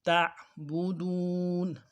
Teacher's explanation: تا عین یہاں پہ عین ہے، اس کو بھی حمزے سے بدل دیا جاتا ہے، حمزہ پڑھا جاتا ہے، تو یہ بہت بڑی غلطی ہے